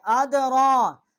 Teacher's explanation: را کے اوپر کھڑا زبر 1 الف جتنا آواز بلند کی ہے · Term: ادغام